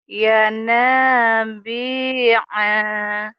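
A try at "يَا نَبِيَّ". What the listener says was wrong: pendek. Ya, pendek dong. Pendek apa panjang A-nya, yo? Pendek kan? ya pendekin ya.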